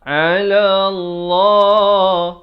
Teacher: Ala Allah. Dibacakan tebal 2 harakat.